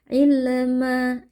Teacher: huruf lam ada sifat tawassud, jadi ada sedikit aliran suara. Tidak boleh dipantulkan seperti qalqalah.